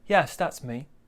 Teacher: so we go down at the end